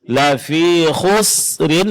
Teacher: di sini huruf sinnya tipis ya Pak. Jangan ditebalkan sehingga akan mirip nanti dengan huruf shad ya.